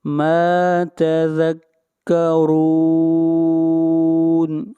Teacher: را کو موٹا پڑھیں گے، را کے اوپر پیش ہے